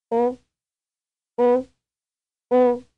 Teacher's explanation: it is pronounced with a mouth relatively closed and rounded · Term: vowel four